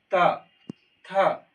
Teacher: जैसे हम त बोलते तो हमारा जीव दांत को स्पर्श करता है · यानी अगर हम देखें हमारा जीभ कहाँ स्पर्श करता है, जैसे तो बोलते हैं तो जैसे हम तो बोलते हैं तो हमारा जीभ दांत को स्पर्श करता है